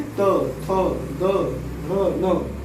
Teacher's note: ता वर्ग में जो पांचों वर्ण है इसका उच्चार स्थान दंत यानी दांत।